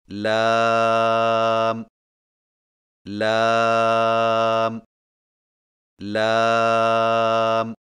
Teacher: لام کی ادائیگی میں زبان کے باریک کنارے کو اوپر والے دانتوں کے مسوڑوں سے لگا کر باریک آواز میں پڑھیں